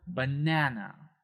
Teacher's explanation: So in that example, banana, we have that second syllable there, that banana. That is said a little bit louder and a little bit higher, a little bit longer, banana, right?